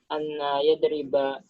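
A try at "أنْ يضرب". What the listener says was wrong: an sukun. An yadriba.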